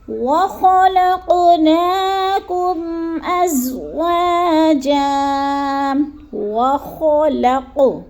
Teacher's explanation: خا حلق کے شروع والے حصے میں، جیسے خا موٹا بھی کرنا ہے اور گول بھی پڑھنا